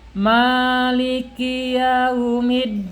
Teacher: di sini panjang mimnya 2 harokat, mad tabi'i